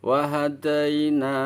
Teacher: ya sukunnya bunyinya i bukan e